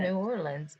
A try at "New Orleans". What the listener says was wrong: Nolans. No, N-E-W L-I-N-S. Nolans. They don't say new. Leave the new out of it. They just call it Nolans.